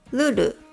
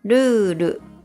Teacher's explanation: The first vowel sound /u/ becomes twice as long. It's called a long vowel.